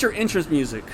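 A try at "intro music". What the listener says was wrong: You said intro. Intro. You sounds like you were saying interest music.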